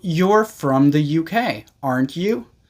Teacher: when we believe the information is correct, the tag is going to have a falling intonation